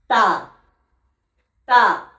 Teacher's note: তা উচ্চারণ হয় এই জিভের আগা এবং সামনের দুই দাঁতের গোড়ার সাথে লেগে, এইখানে। তা তা।